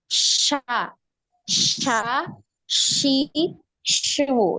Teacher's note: tidak tertempel betul ya masih ada jarak sya sya syi syu Jadi terdengar itu seperti s y gitu ya sya gitu tapi sebenarnya enggak ada y-nya